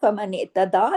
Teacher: दाल के ऊपर खड़ी जबर है, एक अलिफ के बराबर खींचेगा